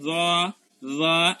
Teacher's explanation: জিহ্বার আগা উপরের দাঁতের আগাতে লাগে, আমরা উচ্চারণ করবো জ জ। এই জন্য জোয়ার উচ্চারণ হালকা।